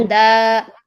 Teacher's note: यहाँ पर जबर तनवीन पर जब हम वक्फ करेंगे तो लास्ट में अलिफ पढ़ेंगे